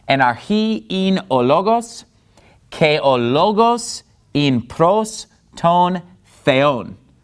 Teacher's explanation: in logos, I'm putting the stress on the first syllable, because that's where the accent mark is.